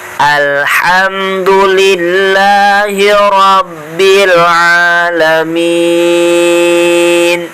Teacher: Makhrajnya huruf ain itu tenggorokan bagian tengah.